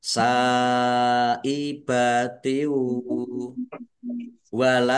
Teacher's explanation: kasrah tanwin bertemu dengan huruf wau bacaan idgham bighunah masuk dengan mendengung yaitu mendengung wau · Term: idgham bi gunnah